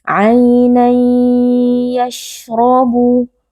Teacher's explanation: Hukumnya adalah idgham bi gunnah. Tanwin dimasukkan ke dalam ya lalu dibaca dengan berdengung.